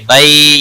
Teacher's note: یالین ہے تھوڑا نرمی کے ساتھ کھینچ کر ادا کریں گے